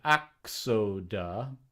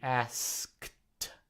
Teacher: Metathesis is switching places. And that what switches places is the K and the S. So they said axoda, KS, whereas the word then switched to asked, SK.